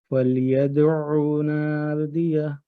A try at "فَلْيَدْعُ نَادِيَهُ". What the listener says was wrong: یہاں اس پہ یدعو او کی آواز لمبی نہیں ہوگی. فَلْيَدْعُ نَادِيَهُ او پر گرپ مضبوط کریں.